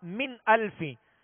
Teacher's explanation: نون ساکن کے بعد حمزہ ہے، حمزہ حروف حلقی میں سے، لہذا یہاں پر غنہ نہیں کریں گے بلکہ اظہار کریں گے